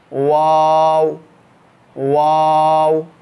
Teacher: वाव के वक्त दोनों होंठ गोल करेंगे, दोनों होंठों की गोलाई से वाव अदा होता है